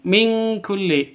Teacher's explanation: nun mati bertemu dengan Kaf samar didengungkan siap-siap ke huruf kafnya tanwinnya ditambah dengan ng